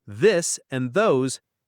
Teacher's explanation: For the th sound in this and those, add voice from your throat.